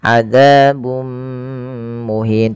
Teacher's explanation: Yang ini kita namakan dengan bacaan idgham bi gunnah. Yaitu cara membacanya memasukkan tanwinnya kepada mim dan ditahan.